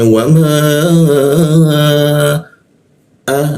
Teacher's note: alif atau hamzah posisinya ditenggorokkan bagian bawah · huruf ma dipanjangkan tiga ketukan